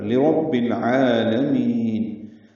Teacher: لام ساکن پہ اظہار قلقلہ نہ ہو. عین وسط حلق سے ادا کریں گے، 2 حرکات لمبا کریں گے. لام کو جلدی پڑھیں گے، میم کو جلدی نہیں پڑھنا، لمبا کرنا ہے.